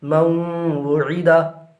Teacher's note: نون ساکین کے بعد حروف یرملونہ میں سے واو آ رہا ہے، لہٰذا یہاں پر بھی ادغام مع الغنہ ہوگا، یعنی غنہ کے ساتھ ادغام کریں گے